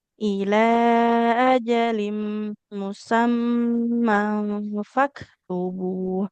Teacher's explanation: Ini jimnya nggak boleh panjang ya. Karena di sini fathah, tapi di depannya nggak ada alifnya.